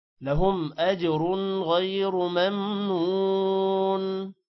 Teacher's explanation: جیم پر قلقلہ ہے، اور رن پر غنہ نہیں ہے کیونکہ غین حروف حلقی ہے، اور را کو موٹا کرنا ہے اور غین کو بھی موٹا کرنا ہے · لهم میم پر غنہ نہیں ہے